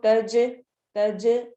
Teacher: جب ان پہ سکون آئے گا تو ہماری آواز پلٹتی ہوئی ہوگی. اس کے اندر تھوڑا سا جو ایک باؤنس بیک والی ساؤنڈ ہوتی ہے وہ ہوگی. تو ہم اس کو تج کر کے پڑھیں گے. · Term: قلقلہ